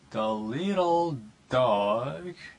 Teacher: Deepening intonation falls and then rises. 자, deeping이란 거는 뭔가 푹 빠지는 걸 얘기하는 거죠.